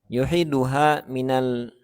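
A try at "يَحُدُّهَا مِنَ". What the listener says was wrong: Yahuddu. Oh, ini tasdidnya harusnya di ini ya. Di dal. Syadda ala dal. Harusnya di atas dal, bukan di atas ha.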